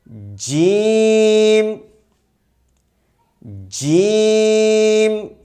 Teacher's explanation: دیکھیے جیم کا مخرج درمیانی زبان، اس امیج میں آپ کو نشان لگا کے بتا رہا ہوں، جیم کا مخرج درمیانی زبان اور درمیانی تالو سے لگ کر کے ادا ہوتا ہے